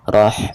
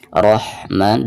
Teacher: di sini ketika membaca rohnya ditebalkan